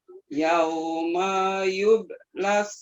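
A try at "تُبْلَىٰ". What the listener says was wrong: Yauma tubala, itu huruf ta.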